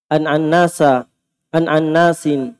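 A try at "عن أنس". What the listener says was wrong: Tidak, bukan itu yang saya masalahkan. Itu nunnya. Kenapa antum tasdid? Kenapa antum baca annas? Kan bisa an-anas. An-anas. Annas. An-annas. Antum tahu antum baca begitu? Sadar? Kukira ini nama seringnya diucapkan. Anas bin Malik.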